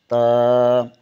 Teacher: زبان کی نوک ثنائے علیہ کی جڑ سے لگے تو تا ادا ہوتا ہے